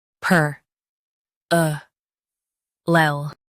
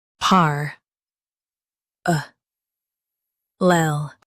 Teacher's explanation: US stresses per, UK par. Keep lel light.